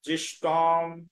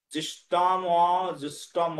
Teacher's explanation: এই মূর্ধন্য ষ আর ট একসঙ্গে রয়েছে তো, মূর্ধন্য ষটাকে আগে আলাদা করে টটাকে পরে নিয়ে গেলাম, তাহলে অনার ইউ জুষ্টম উচ্চারণ হয়ে গেল, জিষ্টম।